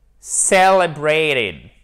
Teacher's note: La syllabe accentuée, c'est la première.